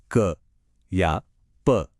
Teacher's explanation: ध्यान दिया कैसे जुबान या होंठ एक पल के लिए हवा को पूरी तरह से ब्लॉक करते हैं और फिर एक झटके से छोड़ते हैं। वही जो बर्स्ट है ना, वही है स्पर्श। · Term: स्पर्शी व्यंजन